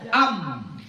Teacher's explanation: awalnya Hamzah contoh kita baca am di mana berhentinya am bibir berarti makhraj huruf mim di mana di bibir